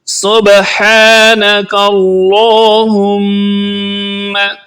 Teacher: میم پر شد ہے، تشدید ہے، جس وجہ سے اس پر غنہ کیا جائے گا، یعنی آواز کو ناک میں لے جا کر ہم پڑھیں گے